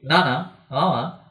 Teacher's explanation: এগুলো উচ্চারণ করার সময় অবশ্যই বাতাসটা নাক দিয়ে বের করতে হয় বা নাসিকা দিয়ে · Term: নাসিকা বর্ণ